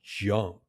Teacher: Whereas the J sound is a stop then release. The tongue does touch the top of your mouth and then it releases with a quick burst of air in words like jump. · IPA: /ʤ/